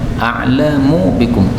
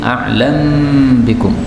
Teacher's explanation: mim ketemu ba boleh idgham